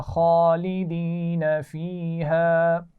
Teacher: خالدینہ میں خواہ کو موٹا پڑھیں گے اور اس پر کھڑا زبر ہے تو کھینچ کر پڑھیں گے